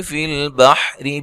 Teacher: तो जब मिला के पढ़ेंगे तो रा बारीक पढ़ेंगे